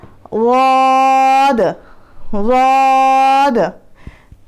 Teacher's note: ज़बान टिप की इसमें ज़रूरत नहीं होती। ज़बान का किनारा, ज़बान का साइड और ऊपर के दाढ़ों के मसूड़े, राइट लगा रहे हैं ऊपर के दाढ़ों को तो राइट साइड में, लेफ़्ट लगा रहे हैं तो लेफ़्ट साइड में।